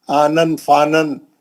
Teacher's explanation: تنوین کو نہیں کھینچتے، غنہ نہیں کرتے. تو اس میں بھی نون ساکن ہے.